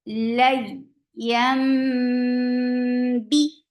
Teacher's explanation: This is iqlab, and you're changing the sound of noon into meme